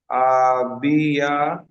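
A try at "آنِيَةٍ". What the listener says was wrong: আ বিয়া নয়, আ বায়ের নিচে নোক্তা রয়েছে, এখানে উপরে নোক্তা রয়েছে, তাহলে নুন হবে আনিয়া।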